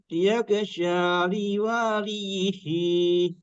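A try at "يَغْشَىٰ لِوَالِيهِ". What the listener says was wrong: Nah, wa-nya masih kepanjangan. Yaghsha liwaliyihi.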